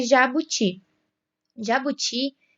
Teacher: Jabuti tem a última sílaba tônica, o ti. Então, jabuti é uma palavra oxítona.